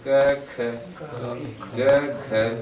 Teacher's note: वायु जो है एकदम स्पर्श करती है, क में नहीं करती, ख में करती है, फिर ग में नहीं करती, घ में करती है। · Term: अल्प प्राण महाप्राण